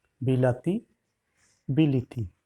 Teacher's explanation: অর্থাৎ আদ্যস্বর এবং অন্তঃস্বরের প্রভাবে মধ্যস্বর পরিবর্তন হয়েছে, ইকার হয়েছে।